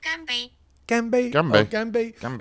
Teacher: they drop off the tone on the second one because it's two first tones together